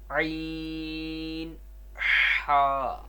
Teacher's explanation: عین ہا حلق کے درمیان والے حصے سے ادا ہوتے ہیں